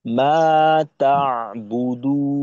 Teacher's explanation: তা আটকাইতে হবে আইনের মাখরাজে।